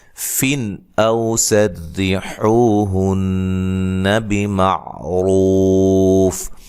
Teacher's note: نون تنوین کا اظہار ہے، غنہ نہیں کریں گے